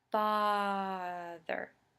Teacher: we're going to do an elongated first syllable